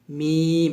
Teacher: মিমটা যখন উচ্চারণ করি দুই ঠোঁট থেকে উচ্চারণ করি তবে দুই ঠোঁটের শুকনা অংশ থেকে আমরা মিমটা উচ্চারণ করি